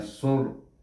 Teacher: diwakafkan di sini, maka ra baca dengan tebal, bunyinya sur.